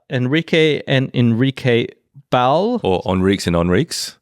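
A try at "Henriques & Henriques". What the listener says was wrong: Or Henriques and Henriques. you say Henrique, it sounds like you're saying Henrique Iglesias.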